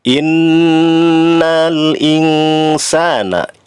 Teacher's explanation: Kemudian ayat ke-6, innal insana, inna di situ ada huruf nun bertasydid. Ini harus dibaca lama disertai gunnah, dengung ya ke hidung. Termasuk ini namanya gunnah asliyah.